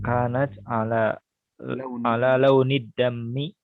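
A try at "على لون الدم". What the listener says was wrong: Bukan dammi, bukan, tapi dami.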